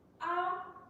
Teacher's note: Tone 1, A, requires no special marking and is characterized by high pitch.